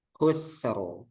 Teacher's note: Jadi sin itu rokhawah, jadi mengalir dulu suaranya. Khusru. Jadi baru dilepas.